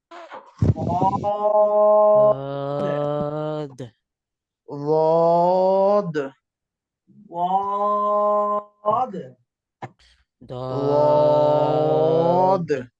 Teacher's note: জিহ্বার কিনারা মানে দদ উচ্চারণের সময় জিহ্বার আগা সামনের উপরে মাড়ির দাঁতের সামনের উপরের দাঁতের মাড়ির সাথে রাখতেছে। এই দদের উচ্চারণের সময় জিহ্বার আগা সামনের দাঁতের সাথে রাখবে না, বরং জিহ্বার কিনারা মাড়ির দাঁতের গোড়ার সঙ্গে সাইডে লাগবে।